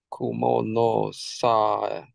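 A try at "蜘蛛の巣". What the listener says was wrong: Close, not sa, it is su.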